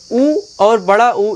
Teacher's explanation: ऊ और बड़ा ऊ, इन दोनों का उच्चारण होता है ओष्ठ से यानी कि होंठ से।